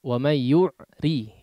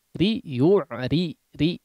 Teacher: di sini ro-nya berharakat kasroh, jangan tebal. Terlalu tebal tadi.